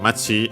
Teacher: accented on the last syllable on its own